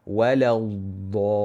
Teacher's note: Dad itu pun perbincangan yang berbeza. Iaitu dad itu huruf rakhawah dan bukan huruf syiddah. Waladda. Lam dinipiskan dan dad ditebalkan.